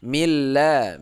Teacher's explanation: Nah, begitu ya. Milla ini lamnya dibaca tipis karena di belakangnya baris kasroh